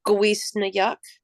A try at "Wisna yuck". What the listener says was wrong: So it's not gonna be a G. You won't put the G on there.